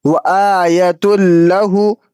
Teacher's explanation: यहाँ पे तनवीन के बाद हुर्फ़ इदगाम में से लाम मौजूद है, इसलिए यहाँ बगैर गुन्ना के इदगाम करके पढ़ेंगे और ये इदगाम ताम कहलाएगा।